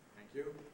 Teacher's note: the low rise is also used to be soothing reassuring and encouraging with a statement